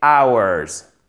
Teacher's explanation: on n'a pas de H aspiré. C'est une des rares exceptions.